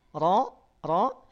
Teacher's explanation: lidah naik 100 Nah betul ya karena dia punya sifat istila saat huruf ro berharakat fathah maka naikin pangkal lidahnya bunyinya menjadi tebal